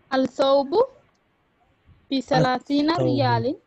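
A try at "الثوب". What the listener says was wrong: Lam is silent.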